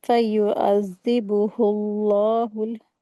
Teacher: زال کے اوپر شدہ ہے، زال حروف لسویہ، اس کو سافٹلی کر کے پڑھیں گے